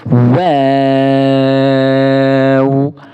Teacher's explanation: اس واو کو ہم نے 3 الف کے برابر کھینچ کے پڑھنا ہے۔ اس کو ہم واو نہیں بولیں گے بلکہ واو، 3 الف کے لمٹ میں اس کو کھینچ کے پڑھنا ہے، اور واو کو باریک کر کے بھی پڑھنا ہے۔ · دونوں ہونٹوں کو گول کرنے سے واو ادا ہوتا ہے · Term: واو کا مخرج